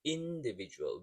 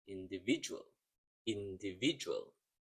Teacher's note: sometimes we can say individual without stressing the third uh syllable